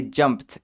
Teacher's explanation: that past tense ed sounds like a t